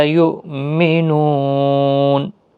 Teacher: لا الف مدہ ہے، یو حمزہ ساکن کو جھٹکے کے ساتھ پڑھیں گے. نو واو مدہ ہے، نون ساکن جب پڑھا جائے گا تو وقف بالاسکان ہوگا، 3 سے 5 الف کی مقدار کے برابر کھینچ کر وقف کریں.